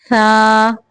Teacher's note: سا کی ادائیگی ہوتی ہے زبان کی نوک جب اوپر کے سامنے کے جو دو دانت ہیں نا ثنایا علیہ، ان کے سرے سے لگے تو سا ادا ہوتا ہے، تو اس کو سیٹی سے نہیں پڑھنا بلکہ سا، نرمی سے سا۔